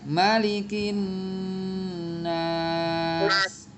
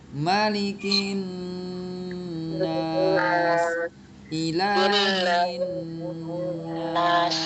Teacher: Maka cara membacanya ialah dibaca dengan ditahan selama 4 harokat panjangnya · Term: nun tasdid